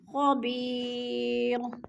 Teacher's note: خبیر، خبی پہ یا مدہ ہے، یا ساکن سے پہلے غو کے نیچے زیر ہے تو یا مدہ، اس کو بھی ہم نے ایک الف دو حرکات کے برابر لمبا کر کے پڑھنا ہے · اور خبیرن، دو پیش تنوین ہے، وقف کی صورت میں دو پیش نہیں پڑھیں گے بلکہ جزم میں بدل کر را کو پڑھیں گے